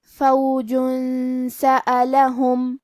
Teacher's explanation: کلمت سألہم سین حروف الاخفاء میں سے ہے اور اخفاء کا معنی ہے چھپا دینا تو ہم یہ تنوین کو چھپاتے ہوئے لیکن غنہ کے ساتھ یہ حکم کو ادا کریں گے